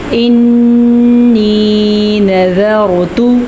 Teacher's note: या मद्दा भी अदा करेंगे और नून का गुना भी अदा करेंगे